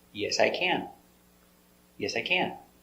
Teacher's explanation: You finish with the helper can. So it is the important word and you give the stress to the word